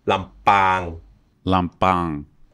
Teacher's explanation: With the throat closed on the P.